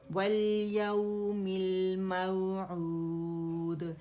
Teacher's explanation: واو ساکن سے پہلے ہمارے پاس فتح آ رہی ہے تو یہ واو لین ہے, نرمی سے ہوگا. اچھا, یہ اصول کیا ہوتا ہے اس کا پڑھنے کا کہ فتح کے لیے آواز 1 کاؤنٹ کے لیے اوپر جائے گی, جبڑا کھلے گا, نرمی سے واو کے ساتھ ملائیں گے اور واو کا رخاوہ بھی شو کریں گے, ٹھیک ہے.